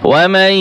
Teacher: ওয়াও জবর ওয়া, মিম ইয়াকে ধরবে এবং ইদগাম হবে। মিম ইয়া জবর মাই, ওয়া মাই।